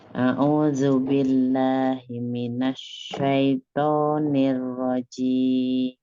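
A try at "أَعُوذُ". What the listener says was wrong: Tidak huruf zai ya, Zal. A'udzu billah. Bukan a'udzu. Ya, ujung lidahnya ada di ujung gigi seri bagian atas. Tapi bukan ke bot juga, bukan a'udzu. A'udzu. Ya, tekan lunak Umi.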